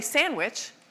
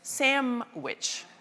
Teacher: most of us lose the D, and then something happens for many of us where we don't say sandwich, we say samwich. That N turns into an M.